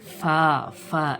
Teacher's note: দুটো ঠোঁট মিলিয়ে ফা ফা হবে, এরকম না, দাঁত কামড়ে ঠোঁটের উপরে কামড় দিয়ে হাওয়া বাইর করেন